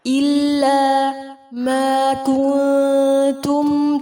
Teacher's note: نون ساکن کے بعد تا ہے، اخفا ہوگا